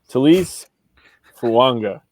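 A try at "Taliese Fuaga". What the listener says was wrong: No N, just Fuaga. You're close.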